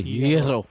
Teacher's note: It's a Y. Almost no G.